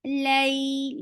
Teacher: For fatha, open your jaws. Lay, lean is two counts long. And it's very soft. Give a nice time for fatha.